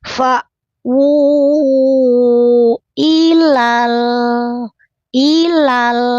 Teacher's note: Lamnya terang jelas tidak boleh memantul. Ilal ilale tidak boleh dipantulkan.